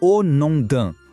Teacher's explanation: Vamos focar na pronúncia au nom d'un. O M na palavra non é quase mudo, bem nasal.